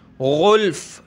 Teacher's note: دیکھیں غین نکالنی ہے گلے سے، اس کی جگہ آپ نے گلف یعنی گاف نہیں پڑھنا، گلف پڑھیں گے تو اس کے معنی بالکل تبدیل ہو جائیں گے، نماز بھی آپ کی ختم ہو سکتی ہے۔